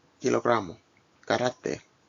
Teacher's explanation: The K is not aspirated in Spanish.